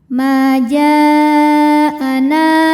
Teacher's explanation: Karena ada alif didahului baris fathah maka nun panjang dua harakat. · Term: mad thobi zohiri